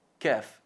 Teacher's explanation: Un poquito más arriba, como vamos a ver en la siguiente imagen, es lugar para la letra kaf, y es también fondo de la lengua, elevando el fondo de la lengua hacia el paladar, ligeramente por encima del qaf, justo por encima del qaf, qa, kaf, iqqa, ahí un pelín arriba.